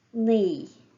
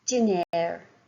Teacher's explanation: the slender sound, the tip of the tongue is against the gum behind the teeth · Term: slender N